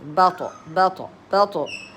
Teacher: the طاء with a سكون so you give it like echo sound